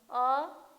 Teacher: अ जो है मध्य स्वर से उच्चारित हो रहा है।